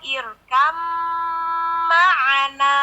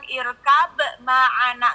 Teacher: Irkam. Jadi ba-nya udah nggak jadi qalqalah lagi. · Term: idgham mutajanisain